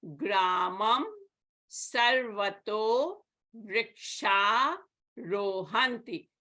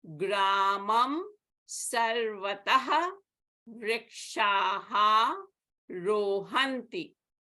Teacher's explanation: The Visarga of Vrikshaha is dropped, and Sarvataha becomes Sarvato.